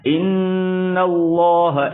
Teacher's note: لفظ اللہ کے لام کو پر پڑھیں گے موٹا پڑھیں گے